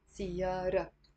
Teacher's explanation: usually we don't pronounce the T مربوطة